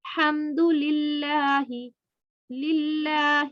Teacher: لفظ اللہ سے پہلے زیر ہے، لفظ اللہ کو باریک پڑھنا ہے